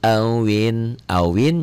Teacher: jadi Awing karena Nun ketemu qof ikhfa